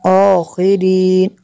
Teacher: رو کو بری کرنا ہے، خو کو پر کرنا ہے